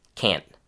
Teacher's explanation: when we make negative sentences, on the other hand, with can't, we do hear the short a sound